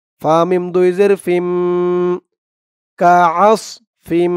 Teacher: তানবিনের পরে ঈদগামে বাগুন্নার হরফ মিম আসছে।